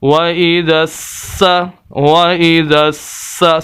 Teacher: سین کو پڑھتے ہوئے سیٹی کی آواز آنی چاہیے